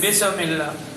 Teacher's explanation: بسم اللہ میں بھی سین ساکن ہے, 5 قطب جد میں سے نہیں ہے, آواز ہلے گی نہیں. بسم اللہ, بسم اللہ غلط آئے گا.